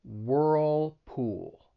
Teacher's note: This is a company that makes home appliances like washing machines, and it's a great example of the dark L. Both of those L's are dark L's, in which your tongue's going to come up to the top part of your mouth, and you're not going to release it.